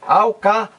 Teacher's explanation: a a sílaba mais forte recai aqui na antepenúltima sílaba alcaloídico lói é a sílaba mais forte